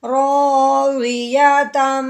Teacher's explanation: تا کو تنوین کے ساتھ آگے میم کے ساتھ ملا دینا ہے غنہ کرتے ہوئے